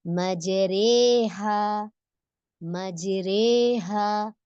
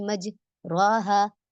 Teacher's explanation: जबर वाले हुरूफ का जेर की तरफ माइल होना, या ये समझे, जबर, जबर नहीं लगना चाहिए पढ़ते वक्त, ना ही जेर लगना चाहिए। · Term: इमाला